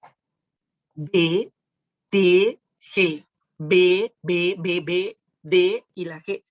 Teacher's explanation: Ellas son sonoras porque hacen que nuestras cuerdas vocales vibren.